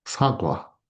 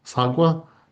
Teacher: there is a bit of an aspiration with uh sagwa